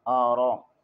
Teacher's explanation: را کے اوپر زبر ہے، اسے پر پڑھیں گے